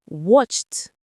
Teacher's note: When a word's base form ends in a voiceless sound, like the ch in watch, the ed ending is pronounced as a voiceless t.